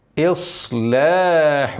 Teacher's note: ص خلي بالك تفخم الصاد كويس مطبقه